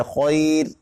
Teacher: یعنی رائے موقوفہ بالاشکان یا بالاشمام سے پہلے یائے ساکنہ ہو تو ایسی صورت میں اس کی یائے ساکنہ کے ماقبل کے حرف کو دیکھنا ہی نہیں ہے، وہ کیا ہے، صرف یائے ساکنہ آنا چاہیے۔ اگر یائے ساکنہ آ گئی تو اب را باریک ہو جائے گی